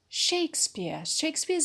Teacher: shakespeare's a noun so we put the stress on shay